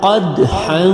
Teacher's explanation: قاف حلق سے نکلے گا اور ہا بھی حلق سے ادا ہوگی۔ قاف دال زبر قد، حا الف دو زبر حن، قدحا۔